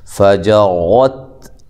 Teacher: را کو موٹا کرنا ہے، تا کو ہلانا نہیں ہے، باریک پڑھنا ہے